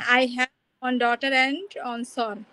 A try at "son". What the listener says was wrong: ওয়ান্স সন হবে না, উচ্চারণটা কি বলবো? সান বলবো। ইয়েস, ওয়ান সান।